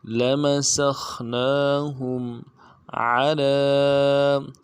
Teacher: کے اوپر کھڑا زبر ہے، ایک الف دار میں کھینچیں گے، ہا کو میم کے ساتھ ملانا ہے، میم ساکن غنہ کریں گے۔